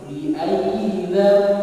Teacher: ini dia mengganti nun matinya diganti menjadi mim, jadi langsung ditutup huruf